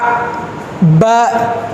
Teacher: ரெண்டு உதடு சேர்க்கும்போது ஒரு எழுத்து வருது உதடு எதுவும் சேர்க்காம இருக்கும்போது அ காலி வாயிலிருந்து வருது காஃப் காஃப் லாம்